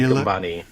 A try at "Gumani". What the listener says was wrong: There's no B, but close enough.